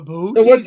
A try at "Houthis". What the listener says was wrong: Houthis. Houthis. There's no B.